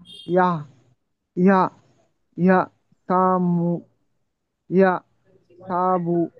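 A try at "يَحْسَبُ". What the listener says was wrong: ইয়া নাই, শুধু ইয়ার সাথে হা আনতে হবে। ইয়া বলেন, হা বলেন তো। ইয়াহ, ইয়াহ সাবু।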